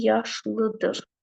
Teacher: Normalda yaşlı vurğu düşür ikiyə